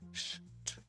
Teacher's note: коли ти скануєш літеру щ два звуки ш ч і ч твердий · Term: Правильна вимова літери Щ